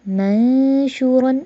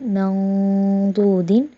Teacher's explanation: یہاں پر نون ساکن کے بعد جو ہے وہ موٹا حرف آ رہا ہے تو یہاں پر موٹا غنہ ہے